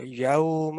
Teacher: لین letters کو نا ذرا سافٹ انداز میں تھوڑا لمبا کر کے یوم اس طرح پڑھنا چاہیے